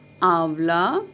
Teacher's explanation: आंवला में पहले अक्षर के साथ ही नाक और गले में से आवाज़ आ रही थी, इसलिए हमने अनुनासिक का प्रयोग आ के साथ किया।